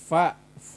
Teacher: itu pertemuan antara gigi bawah dengan bibir atas